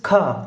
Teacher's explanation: it is kha, where H sound need to be expressed more